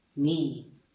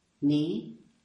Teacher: The first one is the high tone, mi. And the second one, ni, is the low tone.